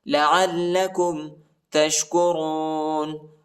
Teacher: عین کو لام کے ساتھ ملائیں گے اور لام کو شدت کے ساتھ پڑھنا ہے